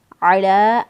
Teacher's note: अला, आइन को वस्ते हलक से, लाम खड़ी ज़बर ला, एक अलिफ के बराबर इसको लंबा किया।